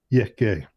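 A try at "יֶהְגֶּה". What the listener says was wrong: Okay, it almost sounded like you were using the hey as a chet in a frenetic. Was that intentional, or is that just kind of the way it comes out?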